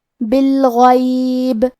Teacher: کلمت بالغیب میں حرف الغین کی ادائیگی حلق کے اوپر والے حصے سے ہے. کیونکہ غین حروف تفخیم میں سے ہے تو ہم یہ حرف کو موٹی آواز میں پڑھیں گے.